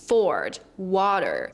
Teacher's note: a rhotic R, which means that the R is pronounced in all positions